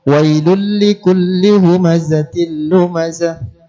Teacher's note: di sini terdapat tanwin bertemu dengan huruf lam, maka hukumnya adalah idgham bila gunnah